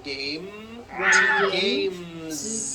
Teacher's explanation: you continue the voicing throughout the whole word and add on a voiced z